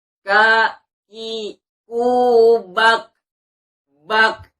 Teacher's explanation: Kalau kita tempelkan letakkan tangan kita di depan mulut, maka kalau ada sedikit suara nafas yang keluar, maka kita sudah betul mengucapkan makhraj kaf. Tapi kalau ketika kita mengucapkannya ya belum mengeluarkan hembusan nafas kita, maka kita masih salah mengucapkan makhraj kaf. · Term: hamas